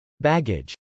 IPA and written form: bˈægɪdʒ (baggage)